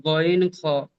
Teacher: হলকের বা কণ্ঠনালীর শেষ ভাগ হইতে উচ্চারিত হয় গইন, খ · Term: মাখরাজ